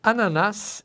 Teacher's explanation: Ananás é uma oxítona, o acento na última sílaba